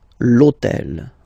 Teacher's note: in French we don't pronounce H, okay, so basically the first sound of the word is the vowel O , okay, so for the same reason, E needs to disappear,